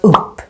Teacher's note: the U becomes very short because we have two consonants coming after the U